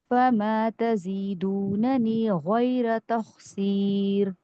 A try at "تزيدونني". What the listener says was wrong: تزیدوننی یا مدیہ تھوڑی سی ڈراپ ہوئی ہے.